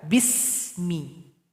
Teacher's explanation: huruf Sin jangan dipantulkan enggak boleh dibaca bisa harusnya dibaca Bismi jadi ya alirkan Bunyi